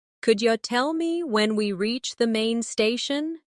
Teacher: Notice how could you becomes could ya.